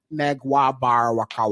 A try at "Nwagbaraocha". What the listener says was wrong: It's not Nag. It's Nwag. Nwagbarak. Ocha. Nwagbara Ocha. Nwagbara Ocha.